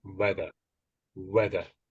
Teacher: So the th isn't quite as strong as it could be. It sounds a little bit like there's a V trying to trying to come in there.